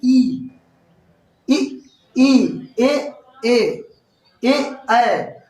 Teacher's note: ई, ई, ई, ए का उच्चारण करने में जीभ का आगे वाला हिस्सा काम कर रहा है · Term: अग्र स्वर